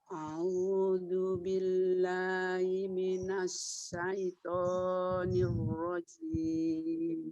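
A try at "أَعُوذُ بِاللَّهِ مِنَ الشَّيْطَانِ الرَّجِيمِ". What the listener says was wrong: Tidak au ya Umi, tidak au tapi a'u. A'u. A. Hamzah. A'u. A'u.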